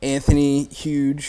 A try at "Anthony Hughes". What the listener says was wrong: I was like, I thought it was like Hughes or something. You said Anthony Huge.